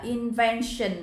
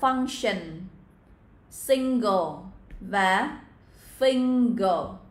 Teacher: Ở đây là invention âm n. Còn ba đoạn khác các bạn sẽ là ng, function, single và finger.